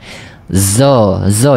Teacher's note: Dia adalah dekat-dekat macam ZO sikit tapi zo yang pelat. Kalau zo betul dia akan bunyi desis. Bunyi desiran.